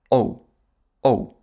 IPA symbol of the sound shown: oʊ